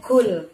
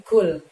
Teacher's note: Pada saat mengucapkan kul di situ, gunakan pangkal lidah kamu, akan tetapi jangan sampai menyentuh ke langit-langit. Kul, jadi dia lebih tipis ya.